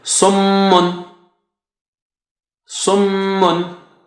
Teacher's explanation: Sad here was very thick and high. So summun, and meme has shadda there, stretch it double